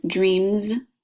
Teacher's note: Dreamz uses the voice it sounds like a Z